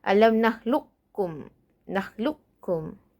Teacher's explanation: idgham nakis, iaitu kekalkan sifat isti'la qaf itu